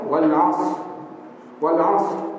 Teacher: huruf ra ujung kena bunyi. Kadang-kadang dia tak bunyi ra.